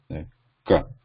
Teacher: the position is throat, where the air is actually blocked. There's complete contact of the back of the tongue, K. And it is non-voiced.